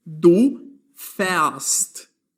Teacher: The letter A with diaeresis, or umlaut in German, is read as an open E.